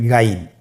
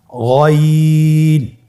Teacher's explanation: গইন হরফটি উচ্চারণ করা অবশ্যই 3 আলিফ টেনে পড়তে হবে এবং আমরা জানি যে গইন হরফটি মোটা হরফ, অবশ্যই একটু মোটা করে বলতে হবে।